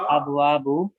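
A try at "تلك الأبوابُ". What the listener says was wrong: अबवाबु, अलग अलग करके पढ़े, मिला के ना पढ़ा करें। अल अबवाबु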